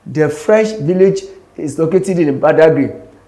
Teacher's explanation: So the word French is stress.